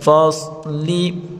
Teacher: ان یوم الفصل صاد کو پر پڑھیں گے